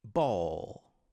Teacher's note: nós temos o som de B, que também é explodido em inglês